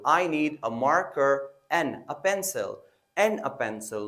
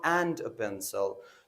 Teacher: in reduction we pronounce and as in, only n. For example, I need a marker and a pencil, not and a pencil.